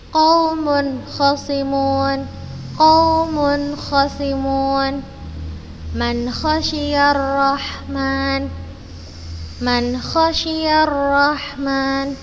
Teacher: Ketika nun sukun atau tanwin bertemu dengan huruf kha, maka kita baca jelas.